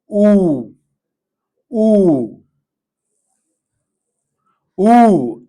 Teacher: Lips tightly rounded, jaw small opening, tongue high back, and make long and steady oo.